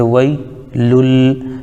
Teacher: جیسے وئی، لام کے اوپر دو پیش ہے یعنی تنوین ہے، تنوین کے بعد حروف یرملون میں سے لام آ رہا ہے تو یہاں پر ادغام بلا غنہ ہوگا ، ادغام یرملون بلا غنہ، تو لام کو لام ملائیں گے،